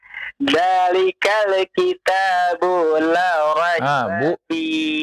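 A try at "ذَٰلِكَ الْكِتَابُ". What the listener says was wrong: Bu-nya jangan dipanjangkan ya. Coba ulang lagi. Dzalikal kitabu la raiba fi.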